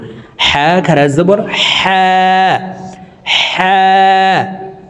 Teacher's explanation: তো আমরা হলুকের মধ্যখান থেকে হাফের উচ্চারণ করব